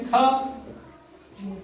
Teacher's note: जहा देर तक आवाज बोले ह का की ध्वनि आए वो महाप्राण कहे जाते हैं